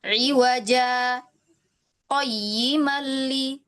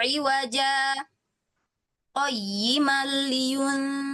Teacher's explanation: Jadi langsung gitu ya disambung tanpa mengambil nafas ya. berhenti sejenak tapi tidak mengambil nafas ya. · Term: saktah